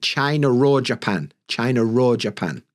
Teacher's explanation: sometimes we'll add an R like China or Japan